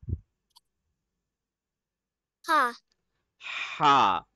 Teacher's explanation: Where do we read ha from? The middle throat.